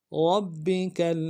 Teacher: را کو موٹا کرتے ہوئے با کے ساتھ ملانا ہے ، با کے اوپر تشدید زور دیں گے، اگلے با کو